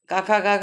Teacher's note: तो जो का वर्ग होते हैं वो कंठ व्यंजन भी कहते हैं इनको, और कोमल तालव्य व्यंजन भी कहते हैं।